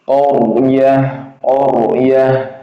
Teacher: Huruf sebelumnya berharakat fathah. Dia rnya tebal.